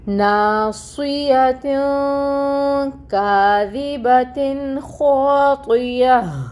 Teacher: جب وقف کریں گے تو یہ گول تا ہا میں بدل جائے گی۔ ہاں میں جب بدلیں گے تو اس کی ہمز کو اینڈ پہ وقف کرتے ہوئے واضح کریں گے۔